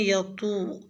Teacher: یطوفون کے طوا کو پر یعنی موٹا ادا کریں، یطو۔ لفظ حمیم میں ہا کا مخرج وسط حلق سے ادا کریں۔